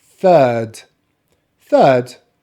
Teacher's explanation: i'm not going to pronounce the letter r because my accent is a non-rhotic accent